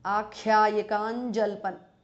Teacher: Anuswara changes to nya, which is the nasal of cha varga.